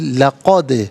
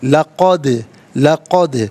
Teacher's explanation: ला अलहदा, क़द अलहदा मिलाकर पढ़ेंगे, लक़द, और दाल साकिन है लेकिन हर्फ़ कलकला है तो आवाज़ लौटती हुई महसूस होनी चाहिए